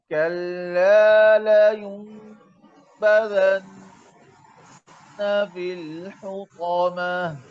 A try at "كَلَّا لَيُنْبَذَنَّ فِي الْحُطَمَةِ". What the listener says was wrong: कल्ला में लाम पर तशदीद है ये वाज़िह होना चाहिए कल्ला लयुनबज़न्न फिल हुतमा